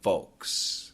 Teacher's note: some people pronounce the L you don't have to f o k s you can think like that so virus